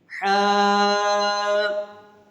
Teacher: حا، ابھی حا کو بھی ہم نے 2 سیکنڈ تک کھینچ کے پڑھا ہے، اور حا کو واضح کر کے پڑھیں گے، ہا نہیں پڑھیں گے۔ حا کی آواز حلق سے نکالیں گے تو یہ حا پڑھا جائے گا، ہے بھی نہیں پڑھیں گے۔